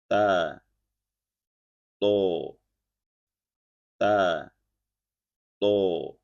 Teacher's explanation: tempat keluar huruf ta dan th adalah sama yaitu ujung lidah menempel di sebagian pangkal gigi seri atas dan gusi di atasnya. Bedanya kalau ta mempunyai sifat hams dan istifal, yakni saat dibunyikan ada suara musa nafas yang terdengar dan dibaca tipis sehingga posisi lidah atau pangkal lidah itu rileks, tidak terangkat.